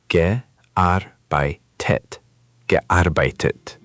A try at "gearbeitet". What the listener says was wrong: Almost perfect. Just put a touch more weight on the Arbeit in the middle. Gearbeitet. The beginning and end are soft.